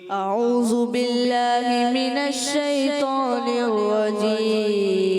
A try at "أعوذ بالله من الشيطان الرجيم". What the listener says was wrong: ذال ادا کرنا ہے۔